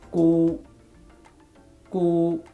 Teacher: you hold the sound the back of your tongue near the palate and then you make the sound and release the airflow at the same time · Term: G sound